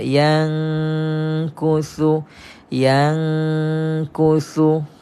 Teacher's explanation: kita masukkan Nun separuh dan Kaf ini separuh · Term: hukum ikhfa, ikhfa